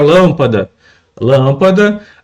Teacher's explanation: a sílaba mais forte é a antipenúltima, é a sílaba lã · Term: proparoxítono